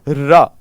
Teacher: रा पूरी वर्णमाला में इकलौता व्यंजन है जिसके उच्चारण में जिह्वा में कंपन होता है, इसलिए इसको प्रकंपित कहा जाता है।